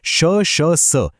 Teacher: हे उच्चारताना तोंडातून हवा घासून बाहेर येते आणि थोडी उष्णता निर्माण होते, म्हणून उष्मे. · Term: घर्षक वर्ण